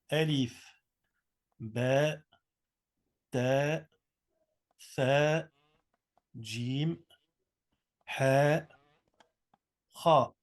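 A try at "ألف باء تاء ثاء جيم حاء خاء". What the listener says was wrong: Vous entendez le frère quand il fait? Il lâche un petit son à la fin. Vous avez remarqué? il fait ba, ta, ta.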